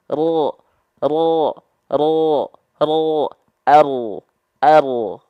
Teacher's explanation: ujung lidah kita enggak nempel ke langit-langit